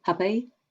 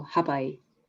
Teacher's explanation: It's like it's kind of accentuated and it goes up a little bit. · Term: long I sound